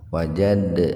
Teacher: Qalqalah sugr ada Dal sukun di tengah-tengah kata jadi dalnya dibaca qolqolah dipantulkan